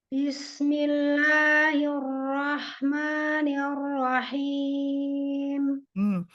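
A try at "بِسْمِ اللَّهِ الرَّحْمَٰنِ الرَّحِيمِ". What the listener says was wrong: Al-jaufnya jangan masuk ke hidung, haknya him, bersih ya, bersih dari hidung, jangan masuk ke guna. Him, ar-rahim, jangan ar-rahim. Nah, masuk dia ke hidung itu. di tenggorokan bagian tengah. Al-jauf. Him, him. Ya bersih ya. Jangan ada sengaunya.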